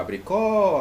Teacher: a última mais forte, né, a sílaba tônica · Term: oxítona